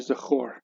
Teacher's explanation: This is a short O, Zechorna, because the accent is on the last one. So this is a closed, unaccented syllable. Instead of reading Zechar, we read Zechor.